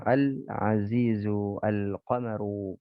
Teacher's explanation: pengucapan lam sukun pada lam alif di sana dibaca jelas sebagaimana jelasnya bulan purnama dalam penglihatan pandangan. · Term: qamariyah